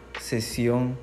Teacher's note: la lengua toca el alveolo y los dientes se juntan tanto que el aire encuentre una salida estrecha para salir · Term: consonante S